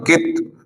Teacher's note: क़लक़ला नहीं होगा। कित, लौटती आवाज पैदा नहीं होगी